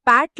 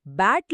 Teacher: పాట్ లోని ప ఒక ఒక శ్వాసం అన్వాయిస్ట్ అదే బ్యాట్ లోని బి ఒక నాదం వాయిస్ట్